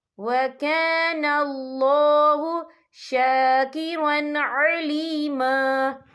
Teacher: وَكَانَ اللَّهُ شَاكِرًا عَلِيمًا، یہاں دیکھیں شاکرن، را کے پر تنوین ہے، تنوین کے بعد جو ہے عین آ رہا ہے، اور عین جو ہے حروف ہلکی کا ورڈ ہے تو ہم یہاں اظہار کریں گے، ہم اسے بنا غننے کے پڑھیں گے